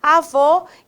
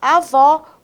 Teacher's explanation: um acento circunflexo traz aí uma tonicidade mais fechada